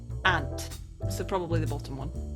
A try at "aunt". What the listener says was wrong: No, that's aunt. Aunt. I think you're like halfway between aunt and aunt. You sound more like that you're pronouncing it with the U in there.